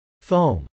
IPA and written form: fˈoʊm (foam)